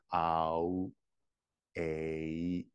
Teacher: the shape of the mouth changing in the middle of the vowel sound